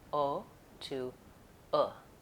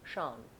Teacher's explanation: the most common error for vowel o is using the pure vowel o instead of American o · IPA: /oʊ/